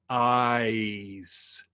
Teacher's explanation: ice is what they call a diphthong, and a diphthong is a vowel that changes through the entirety of the vowel. So if I'm saying ice, I'm bringing my tongue up. · you're going ah, which is the open ah sound, like a AH, and then you're ending with an E, ice. And what you want to do is you want to hold on those more open vowels.